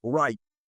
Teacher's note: Porque ellos, la R, ellos se retrofleja. Right. Y la lengua se dobla, ¿no?